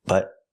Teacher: We hear the T in but as a stop T.